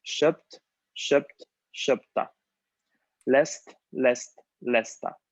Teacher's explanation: cambiamos la D por T, porque puesto que estas consonantes son sordas y la D es un sonido sonoro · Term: consonante sorda